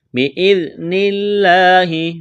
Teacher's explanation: ذال کو نرم کرنا ہے، لفظ اللہ کے نام سے پہلے زیر ہے، لفظ اللہ کے نام کو باریک کرنا ہے